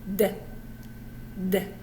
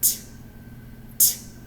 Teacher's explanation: Voice on, voice off, but the same movement.